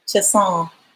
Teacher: Just nasalize the final on